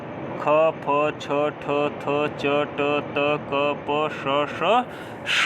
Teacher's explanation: जो खर वर्ण होंगे उनका जो बाह्य प्रयत्न होगा वह विवार होगा, श्वास होगा और अघोष होगा, ठीक है। इतना प्रयत्न होगा।